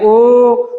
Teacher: पश्च, जिह्वा के पश्च भाग से बोला जाता है। ओ अर्धविव्रत है और ये व्रतमुखी है। व्रत मतलब गोला बनना पड़ता है। ओ बोलेंगे, जब आप उच्चारण करके देखेंगे ओ तो गोला बन रहा है, इसलिए ये ओ जो अक्षर है वो व्रतमुखी।